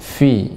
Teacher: sifatnya adalah bibir bawah dengan gigi seri atas